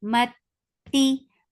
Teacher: Mati for kasra give e sound and the sound is short.